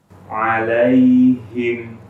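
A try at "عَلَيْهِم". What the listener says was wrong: Oh, Masya Allah. Himnya, haknya nggak masuk hidung.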